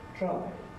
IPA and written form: traɪd (tried)